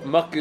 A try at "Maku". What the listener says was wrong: But kailangan matigas yung K mo.